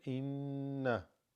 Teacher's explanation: this noon has a gunna, so there's a nasal elongation of it. Inna, where you hold it like that.